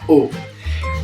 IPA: ʊ